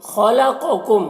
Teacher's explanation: خا کو پر پڑھنا ہے، قاف کو بھی پر پڑھنا ہے · میم کو میم سے ملا کر غنہ کے ساتھ پڑھیں گے، اس کو ادغام شفوی کہتے ہیں۔